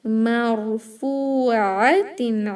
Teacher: Ra sakin heavier, but don't make this meme heavy like more. It is ma. Marfu'atin.